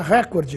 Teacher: com uma tonicidade na antepenúltima sílaba, portanto, como proparoxítono